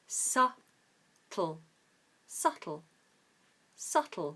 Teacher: subtle is confusing because it has the letter B in it and B is silent in this case so we ignore the be ignore the be so we say